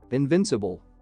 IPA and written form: ɪnˈvɪnsəbl (invincible)